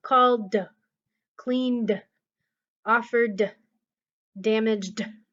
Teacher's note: just say the D sound no extra syllable